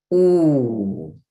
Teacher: Ooh is the highest back vowel. Round your lips.